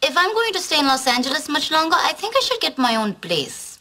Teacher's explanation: И еще одна особенность индийского акцента — это то, как они смягчают букву «l» там, где это не нужно. А еще индусы произносят звук «r», ну, то есть прям произносят.